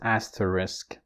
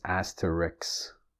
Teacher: Of course, you can carefully pronounce it as asterisk, but you would often hear it as asterisk. So and the sounds ka and sa have switched places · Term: metathesis